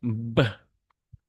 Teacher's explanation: the bilabial sound that we use our both lips to produce this type of sound